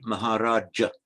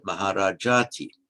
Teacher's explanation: would normally be maharaja with a short ah at the end because it's followed by a t it's lengthened